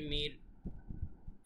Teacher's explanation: চিকন র যেহেতু এর আগে জের আছে